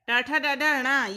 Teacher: ये निकलता है मूर्धन्य यानी तालु के मूर्ध भाग से